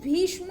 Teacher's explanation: भीष्म होता है, जिसे मूर्धन्य शा लगता है